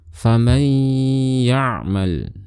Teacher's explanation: Saat kita ingin melafalkan nun sukunnya, maka kita loncat, kita pindah dari seharusnya kita melafalkan nun, kita langsung melafalkan huruf yang berada setelahnya. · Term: idgham bi ghunnah